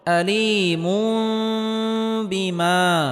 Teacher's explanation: আয়দা বুন, তানবিনের পরে ইকলাবের হরফ বা আসার কারণে এখানে ইকলাব গুন্নাহ করে পড়তে হবে, অর্থাৎ তানবিনকে ছোট মিম দ্বারা পরিবর্তন করে পড়তে হবে।